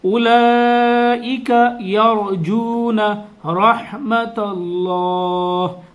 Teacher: اللہ کے لام کو پر پڑھیں گے، اللہ کے لام سے پہلے زبر آ رہا ہے.